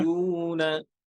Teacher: এই যে র ছুটবে না, ইয়ার না, ইয়ার র মোটা হবে। ফাতহার পরে ير জবরের পরে র সুকুন হয়েছে মোটা, হ্যাঁ?